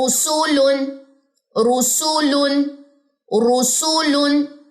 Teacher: بس اقصا لسان پیچھے سے نہیں اٹھے گی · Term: را